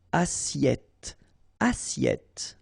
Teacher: The first one, double T here, so it will open your sound, so you will get it okay, and then 2 S here, so between 2 vowels, it's a really strong S